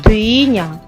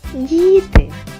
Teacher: у слові диня звук д твердий а у слові діти м'який